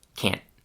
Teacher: they often let the air build up in their mouths, but then don't make that explosion